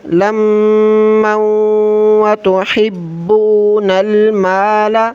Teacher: میم کو واو کے ساتھ ملائیں غنہ کرتے ہوئے